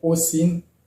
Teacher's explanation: Donc, étant donné que ici, le porteur de l'accent tonique, c'est le O, le mot Osin. Donc, dans le mot Osin, le I se prononce I, étant donné que le O est porteur de l'accent tonique